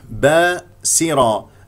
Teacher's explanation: السين مكسوره اكسرها جيدا والراء مفخمه لانها مفتوحه